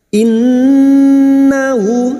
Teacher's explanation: hadhamir yang berharokat panjang, dhamma terbalik yang tidak bertemu hamzah, namanya mad silah khosirah cabang dari mad tabi'i 2 harakat kita panjangkan